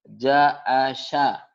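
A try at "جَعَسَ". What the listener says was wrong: nah bukan. Itu mah sya mesin. Ja'asa. Sa. Anginnya hampir nggak ada ya. Ja'asa. Cedal ya. Ja'asa.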